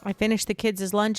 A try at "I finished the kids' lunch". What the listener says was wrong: It's so interesting that you pronounce the S in plurals, in plural possessives. Yeah, like I would just say like I finished the kids' lunch. Yeah.